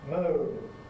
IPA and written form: məʊn (moan)